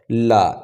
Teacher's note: हवा जीभ के साइडों को स्पर्श करते हुए बाहर निकलती है, इसलिए इसे हम लोग पार्श्विक व्यंजन भी बोलते हैं।